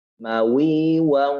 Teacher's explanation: Sebenarnya bukan ikhfa, tapi itu adalah bentuk bahwa bunyi daripada idgham bi gunnah yang makhrajnya adalah juga pada al-khayshum. Memasukkan bunyi tersebut pada rongga hidung. Mawi waw, masukkan ke rongga hidung.